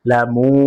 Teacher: পেশের পরে ওয়াও সাকিন মাদে হরফ এক আলিফ টান হবে, মাদ্দে তবাই।